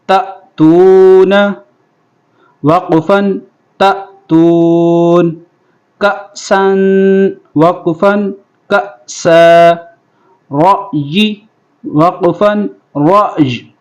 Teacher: حمزہ ساکنہ کو جھٹکے کے ساتھ پڑھیں گے۔